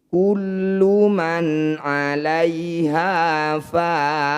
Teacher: Mad tabi'i bertemu huruf hidup kemudian dihentikan disebut bacaan mad arid disukun. Cara bacanya fa panjangkan 6 harokat, huruf terakhir sukunkan.